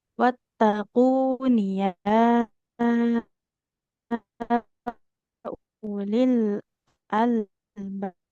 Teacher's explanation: Dhammahnya waw di atas wawnya ada sifar, jadi nggak panjang.